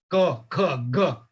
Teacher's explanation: the ka comes from the throat